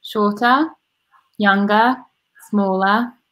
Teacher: in the UK you pronounce the T more because the R is pronounced less